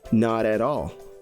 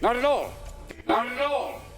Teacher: there are two T sounds and both stand between vowels, so they turn into a R sound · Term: connected speech